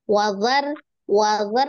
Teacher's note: wazar ro-nya tebal tapi zalnya enggak